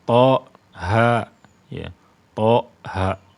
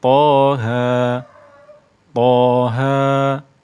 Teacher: Itu kan ada putusan udara ya, udaranya langsung cut gitu ya, dipotong. Seperti seolah-olah ada hamzanya to, ha. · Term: putusan suara